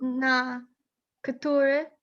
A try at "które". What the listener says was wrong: You're only missing your rolled R a little bit in Ktura, but otherwise really excellent.